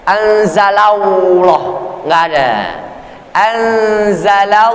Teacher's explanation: Kita baca anzalallah, nggak ada nyempil, menyelusup huruf waw di situ nggak ada. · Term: menebalkan lafzul jalalah